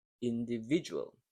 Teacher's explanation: So the rhythm is also 1 and 3, individual. But the stress is in the third plus the first syllable, the third being the stronger one